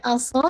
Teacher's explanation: सौद को हैवी कीजिएगा और मेक श्योर सौ विस्लिंग साउंड भी होगी